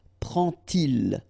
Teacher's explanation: you won't pronounce it like d to make the liaison, but you will pronounce it like t.